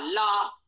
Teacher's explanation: ला का उच्चारण दांतों से होगा, अर्थात जिह्वा दांतों को हल्का थोड़ा सा स्पर्श कर सकती है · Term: दंत स्थानी